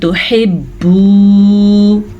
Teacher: میں نے نون کو چھپا کے پڑھا اخفا کی وجہ سے